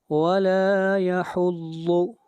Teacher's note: ضاد حروف مستعلیہ میں سے ہے، اس کو موٹا پڑھا جائے گا